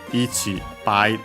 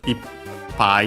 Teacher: ichi pi that becomes ip pi with the doubling of the final consonant. Keep it, keep the original p.